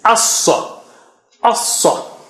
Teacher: A is low and sad is very thick and high. So A should be pronounced as it is.